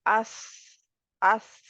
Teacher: सौद की आवाज मोटी होती है और सीटी वाली होती है जैसे आप अगर करें अस तो इसमें थोड़ी सीटी पाई जा